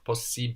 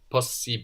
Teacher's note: we are actually pronouncing both of these s's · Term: double consonants